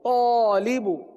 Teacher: الف سے پہلے حرف طا پر ہے، تو الف کو کیا پڑھیں گے؟ پر پڑھیں گے